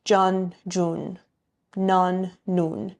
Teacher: when there's an on sound in words, typically in spoken Persian, they're pronounced un